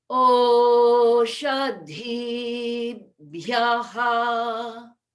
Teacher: So what might be helpful is that we're not trying to create a pause, but a pause does happen after the dhi because we're bringing our lips together to prepare for the bhya